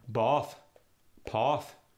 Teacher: In so many cases, the A sound goes to the aw sound.